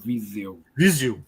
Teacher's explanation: when you pronounce Viseu, you don't expire through your nose. You do all through the mouth. So you're sneezing through your mouth.